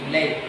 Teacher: یا ساکن اور اس سے پہلے ہے زبر، تو ہم پڑھیں گے لام زبر یا لے، لمبا نہیں کریں۔ زیر کے ساتھ آئے گا تو لام زیر یا، اب حروف لین نہیں رہا، حروف لین صرف زبر کے ساتھ آئے گا۔